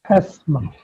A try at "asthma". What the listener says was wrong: Asthma. You don't say asthma. You don't pronounce the t. You say asthma. Asthma. Asthma.